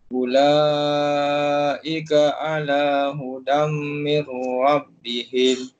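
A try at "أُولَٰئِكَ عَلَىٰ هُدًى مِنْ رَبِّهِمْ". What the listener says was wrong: Kataan ula tu mak wajib dia kena panjang.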